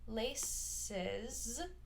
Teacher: so that final S is a Z sound